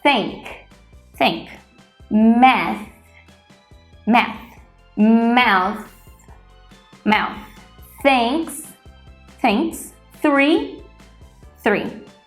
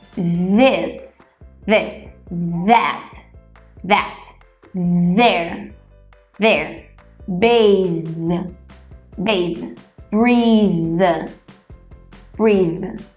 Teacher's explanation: Para reproduzir esse som corretamente, você deve colocar a língua para fora, pressioná-la contra os seus dentes de cima e assoprar o ar de maneira que ele passe entre a sua língua e os seus dentes. A diferença entre essas duas versões de TH é que um é sem som, apenas assopramos o ar, por isso o chamamos de unvoiced, que é o que acabamos de fazer.